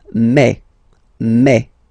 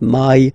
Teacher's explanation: you get the sound E. So really open E, okay, and then you pronounce it me.